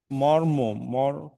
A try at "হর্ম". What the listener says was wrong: না, ম নয়, হ।